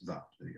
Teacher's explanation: V is V. Again, a voiced bilabial fricative